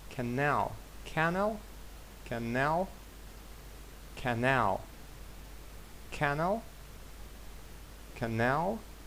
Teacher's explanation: Наголос на другий склад.